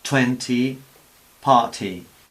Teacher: Lo que pasa es que no es la T española es interdental, también ponemos la lengua entre los dientes, mientras que en inglés, como con la D, ponemos la lengua en los alveolos. Y además soltamos un poco de aire inmediatamente después. 20, party. Ponemos la lengua en los alveolos y soltamos un poco de aire, un pelín de aire.